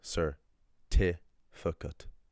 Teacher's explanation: because the sir, the fi, and the cat are unstressed, I'm just going to leave a schwa there so it's easier for me to pronounce